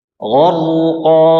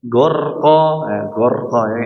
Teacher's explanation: Ya, bahkan 3 huruf, ya. Jadi 3 huruf tebal semua nih. Goin, ra sama qaf, ya. Gharqa. Ya, tidak dibaca gorqa, gorqa.